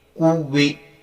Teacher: واو کے ساتھ صاف ادا ہونا چاہیے، دونوں ہونٹ گول ہونا چاہیے